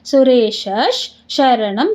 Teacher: ಸುರೇಶ ಶ ಮುಂದೆ ವಿಸರ್ಗ, ವಿಸರ್ಗದ ಮುಂದೆ ಶ ಇದೆ, ಅದಕ್ಕೆ ಅರ್ಧ ಶ ಆಗುತ್ತೆ.